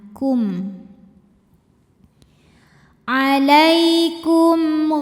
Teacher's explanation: Idhar artinya jelas. Jadi masih dengan bunyi asalnya yaitu m ya, dan tidak ditahan. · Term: izhar syafawi